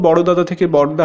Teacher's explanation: এখানে দুটি সমধ্বনির মধ্যে একটি লোপ পাচ্ছে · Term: সমাক্ষর লোপ